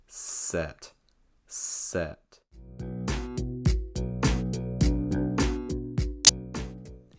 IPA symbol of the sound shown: ɛ